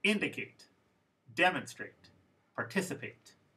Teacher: the word stress was the first one